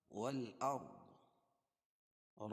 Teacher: را ساکن سے پہلے زبر ہو تو را پر ہوتی ہے۔ والأرض حروف قمریہ ہے کیونکہ الف لام کے بعد حروف قمری کے 14 حرفوں میں سے حمزہ آ رہی ہے۔